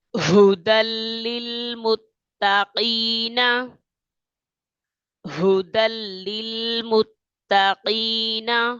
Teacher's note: یہاں قاف قاف یہ موٹا ہے، اسے پر پڑھیں گے، دو نقطے والا کاف ہے، اسے پر کر کے پڑھیں گے موٹا